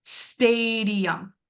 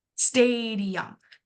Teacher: So, in the word stadium, stadium. Right away, I can hear that I'm actually pronouncing my a sound and I'm making that very long and it's a little bit louder. Stadium. So, if I know my stress syllable and I'm underlining that in orange, that's just how I did mine.